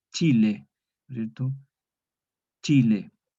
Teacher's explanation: Entonces es una mezcla de oclusiva y fricativa en la fricada. Entonces al pronunciar la che, es como que nosotros fuésemos a pronunciar una oclusiva, una T, y luego se resuelve en una fricción y da resultado una che